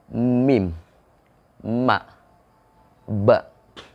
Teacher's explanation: Huruf-huruf yang keluar dari makhraj asy-syafatain yaitu huruf ba dan mim. Huruf ba dan mim ini ketika disebutkan atau dibacakan atau ketika diucapkan, itu bibir atas dan bibir bawah ketemu. Ba, nempel bibir atas dan bibir bawahnya.